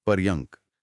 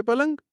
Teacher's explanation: र और य का गुच्छा घिसकर ल बन गया और यह बन गया पलंग एकदम आरामदायक।